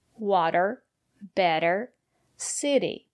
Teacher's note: the letter T between vowels is pronounced as a fast D